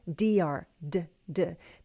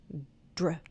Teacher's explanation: the tongue is behind my upper front teeth. It's touching that hard place behind my upper front teeth. That's the called the tooth ridge.